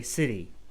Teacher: when making more of a D sound, you're going to sound more American when you do that. So in British English, I mean, really, it's correct to try to say the T, city.